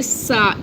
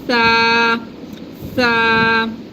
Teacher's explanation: The tha is a very soft letter. There's no whistling sound.